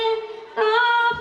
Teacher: কাফের মাখরাজ জিহ্বার শেষ হতে একটুখানি এগিয়ে, তার বরাবর উপরে লাগিয়ে কাফ সহি হয়ে আসবে